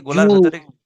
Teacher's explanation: আইনের মাখরাজে গিয়ে জু, গোলার ভেতরে গিয়ে আওয়াজটা বন্ধ হয়ে যাবে